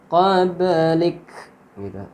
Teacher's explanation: kaf ketika mati dibaca hamz